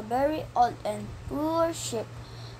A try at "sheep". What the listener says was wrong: The word sheep was read as ship, with a short I sound instead of a long E sound.